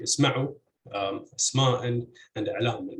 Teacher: stress would fall on the second syllable regardless of its weight